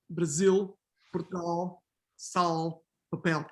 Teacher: Actually, all the L's, to be honest with you, all the L's in Portuguese are velarized, no matter if they are in the answer or coda.